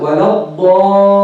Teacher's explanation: Show the shadda of the lam, two lams.